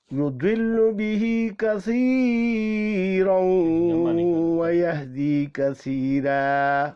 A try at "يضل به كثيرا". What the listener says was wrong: يضل به كثيرا इस तरह लम्बा ना करें,